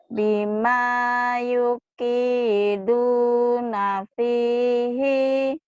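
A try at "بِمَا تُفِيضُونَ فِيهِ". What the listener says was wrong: Buat ini tadi Yupi, bukan Yupi, Tufi.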